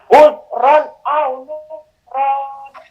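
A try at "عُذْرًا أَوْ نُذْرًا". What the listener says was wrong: Saya lagi huruf zalnya di suaranya dikeluarkan dan dialirkan suaranya. Uz. Ya, jadi bukan tertahan bukan tapi dialirkan suaranya. Uzron au nuzro. Suara nunnya nuzron. Nah, itu nunnya dihilangkan. Bukan nuzron, tapi nuzro. Dengar ya perbedaannya di situ? Ya, jadi suara N-nya, suara nun sukunnya itu sudah hilang ketika berhenti, ketika wakof. Berganti menjadi mad iwad 2 harokat. Kan awalnya nuzron, pendek kan, ron. Nah, ketika dia wakof, berhenti menjadi nuzro.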